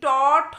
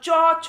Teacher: চ, ছর ক্ষেত্রে দেখো জিহ্বার সম্মুখভাগটা চ্যাপ্টা হয়ে গিয়ে তালুর সম্মুখভাগে স্পর্শ করতে যাচ্ছে, আর যখনই ট, ঠ উচ্চারণ করছো দেখো জিহ্বার অগ্রভাগটা একটু উল্টিয়ে গেছে, কাত হয়ে গেছে। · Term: মূর্ধন্য ব্যঞ্জন